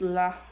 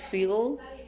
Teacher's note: Characteristic alveolars, liquid, and voice.